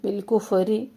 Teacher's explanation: فا میں ہمس جاری رہے